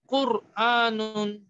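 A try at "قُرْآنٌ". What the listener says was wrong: জি, কুরআনুন। আচ্ছা ঠিক আছে, মাশাআল্লাহ।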